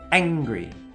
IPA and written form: ˈæŋ.ɡri (Angry)